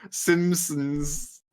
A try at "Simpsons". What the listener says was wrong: That one was without the P.